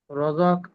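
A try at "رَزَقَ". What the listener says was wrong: প্রথম কথা হলো ঝাতে সিটি হয় নাই, আপনার সিটি দিতে হবে। দ্বিতীয় কথা হলো তিনটা হরফ একসাথে মিলাবো না, একটু একটু করে মিলাইয়া মিলাইয়া সামনে আগাবো। র জবর র, জা জবর জা, রঝা।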